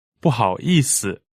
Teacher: 不 is fourth tone, 好 is third tone, 意 is fourth tone, 思 here is neutral tone.